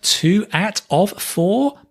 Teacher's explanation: it's the schwa sound that we're using in the weak form. Not always, but usually.